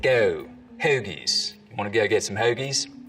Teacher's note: diphthong starts to move forwards in the mouth